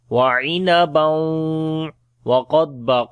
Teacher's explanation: After the tanween there is waw, we make idgham with ghunna